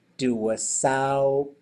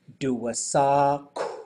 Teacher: so the rounding doesn't happen until after the consonant